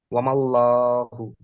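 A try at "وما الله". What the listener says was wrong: হুম, ওয়ামাল, মাল, এই যে সিম্পল লাম হয়ে যাচ্ছে, করতে হবে মোটা করে, ওয়ামাল।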